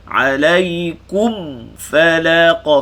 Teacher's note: Mim sakinah bertemu fa, izhar syafawi. Kat sini kena ketat lebih sikit sebab bertemu fa.